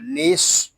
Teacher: با یا زبر بئی، مم بئی، نون صاد زیر نس، یہاں الف و لام یہ نہیں پڑھے جا رہے، صاد یہ حروف مستعلیہ میں سے ہے، اس کو پر پڑھیں گے، نون کو ہم صاد کے ساتھ ملا دیں گے۔